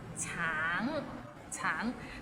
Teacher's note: the end has a little ng, so it's a bit of nasal sound